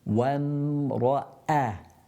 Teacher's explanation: you've got wa from the lips, and then the meme also from the lips